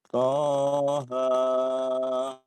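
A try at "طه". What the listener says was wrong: Terlalu panjang. Itu dua-duanya mat tabi'i.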